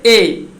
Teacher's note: तो ए को कंठ और तालव्य यानी तालु से और कंठ से ये दोनों को मिला करके उच्चारण जो होता है उसे ए कहा जाता है